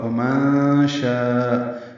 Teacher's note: شاء میں مد متصل ہے، الف مدہ کے بعد حمزہ آنے کی وجہ سے ہم اس کو 4 حرکات سے زیادہ لمبا کرتے ہیں